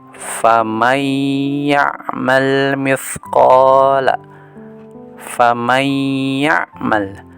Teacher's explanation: Nun nya dilebur ke huruf ya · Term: idgham bighunnah